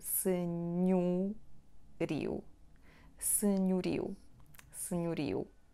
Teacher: In the second syllable we have non-stressed o, which sounds like u